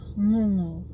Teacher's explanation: So the first thing that we want to teach you that you should know when learning Samoan is the letter G or nga in Samoan. It is not pronounced J or G like you would in English. It's pronounced ng, as in the NG sound that you hear at the that you use at the in words like sing or song or pong, long.